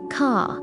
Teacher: Your tongue curls at the end.